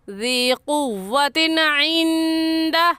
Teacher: غین خا، ان میں سے عین آ گیا ہے، اس لیے اس تنوین پر غنہ نہیں کریں گے